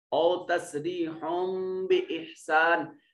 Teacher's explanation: او تسریحم بإحسان، یہاں ہا کے اوپر جو تنوین ہے اس کے بعد با موجود ہے، نون تنوین کے بعد با آ گئی اور نون تنوین کو چھوٹی میم سے بدل دیں گے